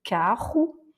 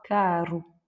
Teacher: avec le 2R, on a un R raclé, carro. Et ici, quand il est tout seul et en milieu de mot, on va avoir caro